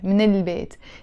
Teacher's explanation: I'm pronouncing it fast with the liaison